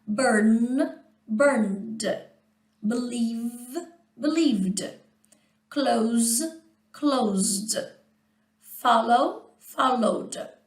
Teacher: Termina com som vozeado, vibrando as cordas vocais, acrescentamos o som vozeado também, vibrando as cordas vocais.